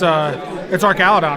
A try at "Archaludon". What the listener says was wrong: There's an H, it's Arch. an H, so it's Archaludon.